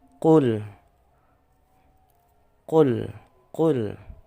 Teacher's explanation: Lamnya tidak boleh mantul. Bukan qalqalah.